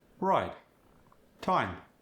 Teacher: The I sound as in ride in time, the tongue is slightly tighter within the mouth.